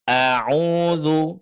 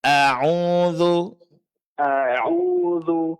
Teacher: Jadi bukan o ya, tapi a, dibuka sedikit kedua bibirnya. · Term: fathah pada hamzah